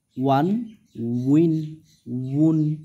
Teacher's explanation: হালকা বার মতন উচ্চারণ আসবে, দুই ঠোঁট গোল হয়ে উচ্চারণটা হবে